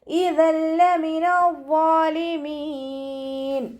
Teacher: തെൻവീനിന് ശേഷം ഇദാം ബിലാഗുനയുടെ അക്ഷരമായിട്ടുള്ള ലാമ വന്നിട്ടുണ്ട്. തെൻവീനിലുള്ള നൂനിൻ്റെ സൗണ്ടിനെ ലാമിലേക്ക് ലയിപ്പിക്കണം. പക്ഷെ നമ്മളവിടെ മണിക്കാതെ ഓതി കൊടുക്കാൻ ശ്രദ്ധിക്കണം കേട്ടോ.